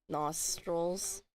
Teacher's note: there could also be an argument that there's no e there and just use a dark L instead